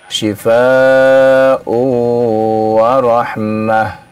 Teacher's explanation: Kalau disambung terjadi idgham ya